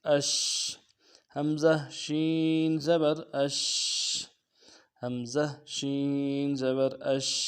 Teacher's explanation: حمزہ شین زبر اش، اش، پھر تفشی ہے، شین کو تفشی کو واضح کرنا ہے اور آواز جاری رہے گی۔